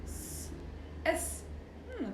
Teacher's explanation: when i put my hands on my throat like for example s s there is no vibration so it's called voiceless like there is no voice from it there is no vibration